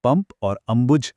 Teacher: पंप और अंबुज दोनों में ही बिंदी म की आवाज देती है